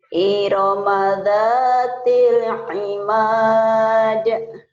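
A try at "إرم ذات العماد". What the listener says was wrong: sudah bagus, cuman kalau boleh dicepetin sedikit ya. Irama dzatil imad. Jangan cepat. Iramada. Kayak nyanyi orang.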